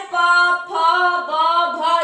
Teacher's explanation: ठीक है, तो होठ से हमारे प, फ, ब, भ, इसमें देख लीजिए दोनों होठ जो है वो टच हो रहे हैं, एक दूसरे में छू रहे हैं।